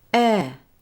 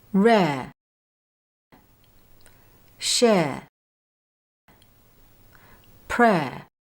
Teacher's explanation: With this particular dip thong, when it's said quickly, the mouth does not close to a neutral position for the schwa sound. Instead, the e sound is pronounced as a slightly longer sound like this.